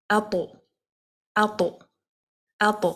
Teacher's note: when you say these letters with the sukoon, the ta with the sukoon, you need to bounce the letter. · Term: qalqala